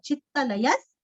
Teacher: विसर्ग का उच्चारण आधा स